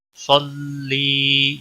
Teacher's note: نصلی، نصلی صاد کو موٹا پڑھیں گے. صلی یا مدہ ہے، ایک الف کے برابر کھینچ کر پڑھیں گے